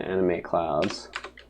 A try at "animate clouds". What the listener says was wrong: It sounds like you're saying anime clouds, animate cloud.